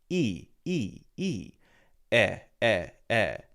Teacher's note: that e okay so the E there is a long e the long e is e very wide smiling e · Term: long e sound